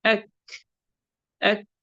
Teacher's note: ہلکی سی آواز آ رہی ہے، سانس جاری ہے. کوئی اسٹرونگ یا جیسے قلقلہ میں کتنا اسٹرونگ آواز آتی ہے، اس میں ہلکی سی آواز آنا، اس کو کہتے ہیں ہمس.